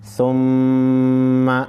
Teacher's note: सुम्मा मीम मुशद्दद है, गुन्ना करेंगे।